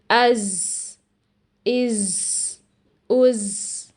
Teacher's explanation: ہم زا ادا کرتے ہوئے ہوا بھی جاری کر دیتے ہیں، جس کی وجہ سے زا کی آواز سین کے اندر مکس ہو جاتی ہے اور ایسی آواز سنائی دیتی ہے، از، از، از۔